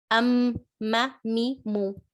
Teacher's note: mim is pronounced by closing your lips and using the nasal passage.